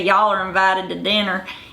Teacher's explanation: they have these hard R sounds, and they brought in their flat ah sounds